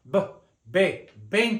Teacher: the V and the B have that hard sound b b b the Two Lips come together they call it a bilabial sound